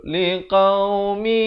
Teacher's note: Asalnya liqaumin, tapi bila datang ya jadi mi, dua harakat. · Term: idgham bi gunnah